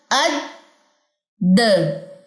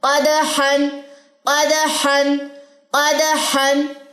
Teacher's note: अद, हथेली पे सांस तो नहीं लग रहा, नहीं लग रहा, क्योंकि इसमें सिफ्ते हम्स नहीं है, इसमें सिफ्ते जहर है, यानी कि आपकी सांस बंद होगी, आपकी आवाज बंद होगी, और इसमें कलकला भी है। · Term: शिद्दत और कलकला